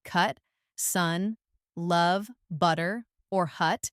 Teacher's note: In contrast, the neutral uh sound as in words like cut, sun, love, butter, or hut is a central very relaxed sound. Your mouth should be quite relaxed, almost neutral without much tightness.